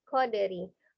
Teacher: kofnya dibuka ketika fathah ko, kemudian dal sukun dipantulkan, qalqalah qadari